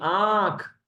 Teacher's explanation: देखिए यहां पर वाइब्रेशन भी महसूस होगा और हवा भी निकली यानी नाक और मुंह जब दोनों का इस्तेमाल होता है तब उसको हम कहते अनुनासिक यानी चंद्र बिंदु